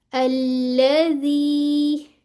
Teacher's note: जी टू counts की मद बन रही है, ठीक है, इसको मद असली कहेंगे।